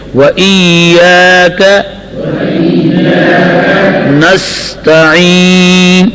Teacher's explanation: سین کو تیز آواز سے پڑھیں گے, سین کی جگہ ثا نہیں پڑھیں گے